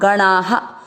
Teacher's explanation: अपन ने विदु में ऊ की मात्रा थी तो मात्रा को पढ़ा हु, विदुहु। और गणा में आ की मात्रा थी तो विसर्ग को पढ़ा हा, गणाहा। पहला चरण रिपीट करेंगे।